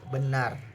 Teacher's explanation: dihasilkan dengan posisi lidah netral tidak terlalu tinggi maupun rendah dan bibir rileks